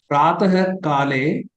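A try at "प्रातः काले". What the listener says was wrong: Atra visargah pratah kale iti vaktavyam. Pratah kale dhenum sudakshina sahitah pujitavan.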